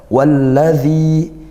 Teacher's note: Walla yaitu idgham syamsiyah, dzi kasrah diikuti ya sukun, mat tabi'i panjangnya satu alif